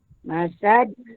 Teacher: Qalqalah kubro dibaca dengan lantunan sederhana besar.